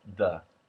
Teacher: Voice TH becomes something closer to a D.